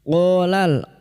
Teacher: qa fathah diikuti alif 2 harakat mad tabi'i. Qala lam ta'rif yang bertemu kaf idhar qamariyah.